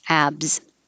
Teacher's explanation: short version abs the s sounds like a z